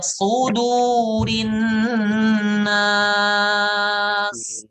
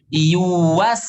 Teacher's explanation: Sudur shadnya tebal, ya. Kalau yuwaswisu tipis.